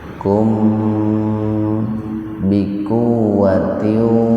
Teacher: Mim mati ketemu dengan ba itu ihfa safawi. Kalau ihfa dibaca samar di bibir.